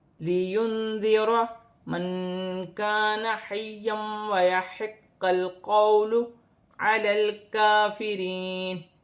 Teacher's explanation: نون ساکن میں اخفا ہوگا کیونکہ ذال حرف اخفا میں سے ہے